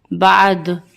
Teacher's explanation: دال بھی حروف قلقلہ میں سے ہے تو وقف کی صورت میں ہماری آواز پلٹ کر آئے گی